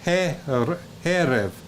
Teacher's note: notice the accent on the first syllable